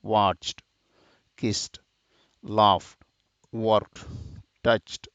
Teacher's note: e d sound is voiceless like walked